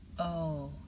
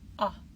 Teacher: The long O says its own name. O, the short O says ah.